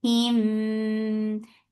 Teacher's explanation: This is idgham shafawi. You're keeping the sound in your nose for a longer time.